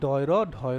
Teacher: এই ধ্বনি উচ্চারণের সময় কি হয় একটা তারণা সৃষ্টি হয় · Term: তারণজাত ধ্বনি